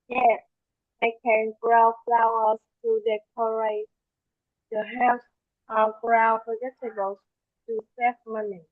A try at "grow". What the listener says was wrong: Okay, so the word grow, we don't pronounce it growl. We pronounce it grow, like an owner.